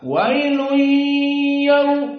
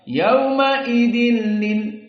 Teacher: Dan tanwin masuk kepada lam, maka bila gunnah tidak ada dari hidung khaysum dan tidak ada dua harokat.